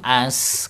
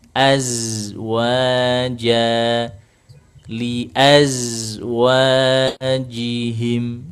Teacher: dilirihkan, dilirihkan suaranya agar tidak terlalu mendesis. Kalau mendesis kan az sama seperti huruf sininya.